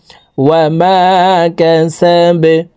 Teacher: ওয়াও জবর ওয়া, মিম আলিফ জবর মা, ওয়া মা, কাফ জবর কা, সিন জবর সা, ওয়া মা কাসা, বা জবর বা, বাকে ওয়াকফের ক্ষেত্রে সাকিন করে ফেলবো। নিচের দিকে ধাবিত করে ধাক্কা দিয়ে সাকিন করতে হবে, কারণ বা কলকলার হরফ।